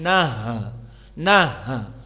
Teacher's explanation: Maka ha as-sakinah harus hams dan dia juga rokhawah